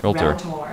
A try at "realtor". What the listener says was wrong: When people who are trying to imitate the American accent, they overpronounce things, And realtor, it's just like quick, realtor, as opposed to realtor.